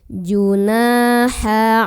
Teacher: karena ada Alif sebelumnya Fatehah Nun nya dipanjangkan dua harokat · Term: Mad Thobi'i